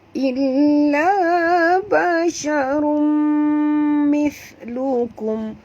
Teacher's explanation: Okey, tanwin bertemu dengan mim. Sekali lagi kita jumpa idgham ma'al gunnah. Ya, dengung perempuan dua harakat.